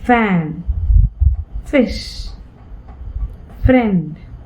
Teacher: See how I articulate that using my lower lip and the upper row of teeth, using my lip and teeth, labiodental